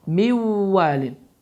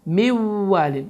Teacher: Deməli, idğam ma'luğunna qaydası baş vermişdir ki, burada nun səsi oxunmur. Vav isə şəddələnərək burundan tələffüz olunur və 2 hərəkə miqdarında uzadılır. Və düzgün oxunuş mivvalin.